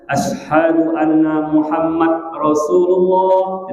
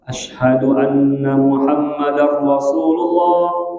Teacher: Diidghamkan dal kepada ra.